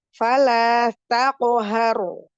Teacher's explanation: roknya sukun tafkhim dibaca karena sebelumnya berharokat fathah